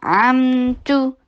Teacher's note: ता के ऊपर दम्मा के लिए होंठों को गोल कीजिए और शॉर्ट रखिए